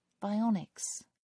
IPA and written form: baɪˈɒnɪks (bionics)